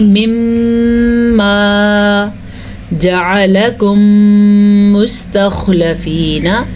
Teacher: وہ قاعدہ اس طرح ہوتا ہے کہ میم ساکن کے بعد جعلکم مستخلفین، یہاں پہ تجوید کا جو قاعدہ ہے ادغام شفوی ہے، اس کی روح سے ہم غنّہ کریں گے اور یہاں پہ ہونٹ بند ہو جائیں گے غنّہ ادا کرتے